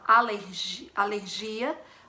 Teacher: em português a gente fala alergia alergia dando enfoque maior no gia dando essa sílaba tônica nos gia e em espanhol a sílaba